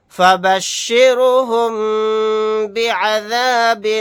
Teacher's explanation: یہاں پر میم ساکن کے بعد با آ گیا تو یہاں پر غنہ کر کے پڑھیں گے